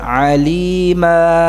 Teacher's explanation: Dalam keadaan waqaf dibaca alima. Ma dua harakat ya. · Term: mad iwad